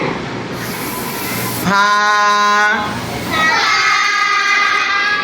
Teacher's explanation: উপরের সামনের দুই দাঁতের আগার সঙ্গে লাগিয়ে নিচের ঠোঁটের পেটের সাথে লাগিয়ে